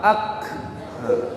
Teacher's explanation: Huruf sin kita sukunkan, as, keluar udaranya. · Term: hamas